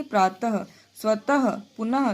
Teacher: विसर्ग का उच्चारण ह के समान होता है।